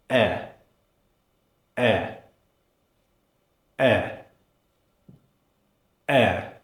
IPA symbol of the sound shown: e